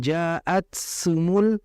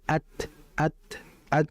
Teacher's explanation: Jadi dia langsung terputus karena ta ini sifatnya syiddah bukan bukan rikhawa.